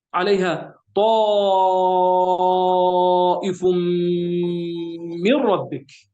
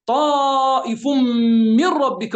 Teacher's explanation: عليها طائف من ربك، فيها إدغام، وهذا الإدغام نون مع الراء يسمى هو الإدغام التام بلا غنة، يعني إدغام سريع جدا. أسرع الإدغامات هو هذا الإدغام عندما يكون من دون فاصلة.